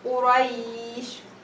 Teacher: the 2 sukoons comes together, so it's hard to say Quraysh. So you have to make it longer, and this kind of mad we call it mad al-lim. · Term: lean mad